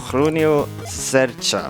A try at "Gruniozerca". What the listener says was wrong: Okay, the second part was good. The first one, we need to work on that Swedish accent. Yeah, you're trying it the Swedish way. It's Grunio that.